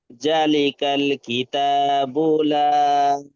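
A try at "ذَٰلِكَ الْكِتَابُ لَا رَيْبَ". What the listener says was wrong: চাটা টান দিলে ভালো হতো না? একলিপ টান দিলে ভালো হতো না?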